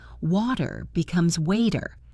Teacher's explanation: We talked about the American flap T, which sounds like a D.